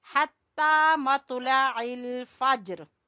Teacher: जीम के ऊपर कलकला करते हुए हम यहाँ रुकेंगे